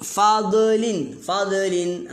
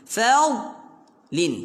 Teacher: Huruf dot jangan lantun, tahan ya.